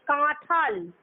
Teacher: তাহলে কাঁঠাল যখন উচ্চারণ হচ্ছে সেক্ষেত্রে টটা পরিবর্তিত হয়ে যাচ্ছে ঠয়ে, অর্থাৎ টয়ের অল্পপ্রাণ ব্যঞ্জনটা ঠ হয়ে মহাপ্রাণ ব্যঞ্জনে পরিণত হচ্ছে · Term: মহাপ্রাণী ভবন